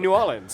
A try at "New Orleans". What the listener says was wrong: You put emphasis on the wrong syllable.